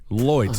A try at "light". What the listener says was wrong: But the thing is that it's not as ridiculous as loy. It's light.